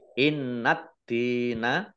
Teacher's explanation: Nun tasdid dibaca gunah ya dibaca mendengung ditahan dua harakat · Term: gunnah